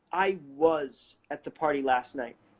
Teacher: I'm putting contrastive stress on was because I'm contradicting what he said.